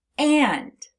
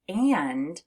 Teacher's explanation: when you have a short A and an N, it sounds like it's coming through your nose, which is why when we say the word and, you actually feel a little bit of a buzzing in your nose. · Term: the nasalized A